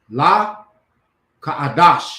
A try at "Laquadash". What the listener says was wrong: Laquadash. Laquadash. that's one syllable. That's Ka.